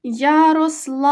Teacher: протягнули ми голосний звук а він є наголошений